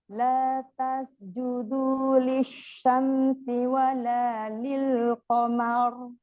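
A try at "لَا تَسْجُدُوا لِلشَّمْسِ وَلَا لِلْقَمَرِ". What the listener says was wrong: Sinnya di sini kurang kedengeran sofirnya. Ya, harus kedengeran desisnya. Desisnya harus kedengeran.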